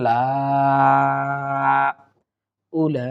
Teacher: দেখুন এরপরে লামের উপর খাড়া জবর আছে, আর খাড়া জবরের উপরেই মোটা চিহ্ন, সুতরাং লামের খাড়া জবরটা আমরা 4 আলিফ পরিমাণ টেনে পড়ার চেষ্টা করব